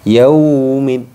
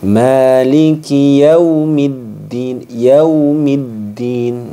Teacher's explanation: Yaumi ini tidak boleh dibaca panjang.